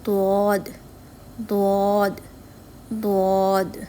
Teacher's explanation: زبان کی دائیں اور بائیں کروٹ اوپر والی داڑھوں کی جڑوں سے ٹکراتی ہے تو ضاد ادا ہوتا ہے. جڑوں سے یہاں مراد ہے جہاں سے دانت نکل رہا ہوتا ہے، مسوڑوں کے بعد والی جگہ.